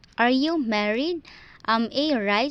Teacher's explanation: So from normal tone, it will rise and it will not shut down. It will remain rising. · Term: rising intonation